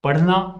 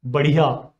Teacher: The tongue curls back, touches the hard palate, and with a puff of air, it falls and makes the sound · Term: retroflex flap